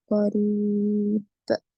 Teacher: بعد قاف ہے، اخفا ہوگا، را پہ رویا زدی یا مدہ، آخری حرف پر جزم دیں گے تو خلخلہ کبرا ہوگا